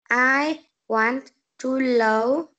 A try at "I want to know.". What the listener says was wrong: And it should be N. Say N. I want to know. Not low, but no. I want to know.